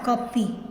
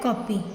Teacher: इसका उच्चारण ना तो पूरा ओ होता है, ठीक है, ना पूरा आ होता है, कॉपी, इसको पढ़ते हैं कॉपी।